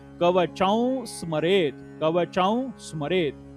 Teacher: च वरती अनुस्वार आहे. अनुस्वाराच्या समोर स हे अक्षर आहे, त्याचा अनुस्वाराचा उच्चार अनुनासिक व असा होतो.